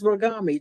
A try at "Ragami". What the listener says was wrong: You got to roll them both. Ragami.